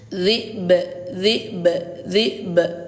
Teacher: Kalau huruf yang dipantulkan itu berada di akhir kalimat seperti ini, maka pantulannya kuat ya. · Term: qalqalah